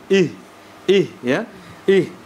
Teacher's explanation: berada di paling bawah ih ya ihdina ihdina ihdina nah kemudian huruf ha itu adalah ya hurufnya rakhawah ya Sehingga di situ ada aliran suara ketika dimenekan ih ih ya Ih lantas masuk ke huruf da